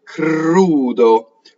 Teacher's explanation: the K for singing has to be put more towards voiced right so if you think about all your consonants in pairs